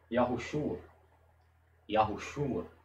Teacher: Só que esse O aqui, ele funciona como se fosse como uma semivogal. Ele é um O quase inaudível. Você quase não sente ele na hora de pronunciar e quase não ouve.